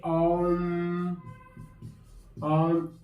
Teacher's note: लंबा उच्चारण करने पर प्लुत हो जाता है। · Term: प्लुत स्वर